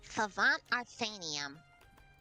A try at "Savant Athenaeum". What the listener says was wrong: That's not an R. That's a T.